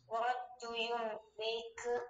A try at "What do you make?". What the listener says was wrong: 묻는 문장인데, 하다시 들어있는 묻는 문장인데, 묻는 느낌 안 들게 한게두 번째야, 지금.